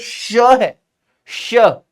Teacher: इसका उच्चारण स्थान होता है मूर्धा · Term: मूर्धन्य